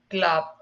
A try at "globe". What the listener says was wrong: Well, it's a long O. Globe. O. Globe, like the globe, a world globe.